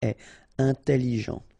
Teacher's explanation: Double L. It opens the pronunciation of your E. So it's E. Intelligent.